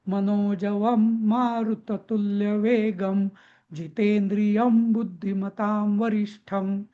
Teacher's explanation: तर इथं सगळ्या अनुस्वाराचं रूपांतर आपण म मध्ये केलेलं आहे उच्चार करताना